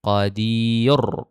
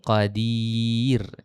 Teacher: Sama juga nipis, maka bertambah kuatlah hujah mengatakan bahawa ra itu dibaca dengan nipis